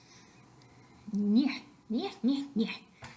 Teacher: El punto palatal, el modo nasal y sonorización sonoro. Una cosa para recordar es que todos los fonemas nasales son sonoros.